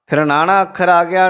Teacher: ਨਾਣਾ ਅੱਖਰ ਉਲਟ ਜੀਭੀ ਹੈ, ਤਾਲਵੀ ਅੱਖਰ ਹੈ।